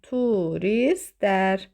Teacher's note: T düşəcək, l-da d kimi tələffüz olunacaq.